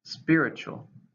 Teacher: it's an adjective three syllables stressed the first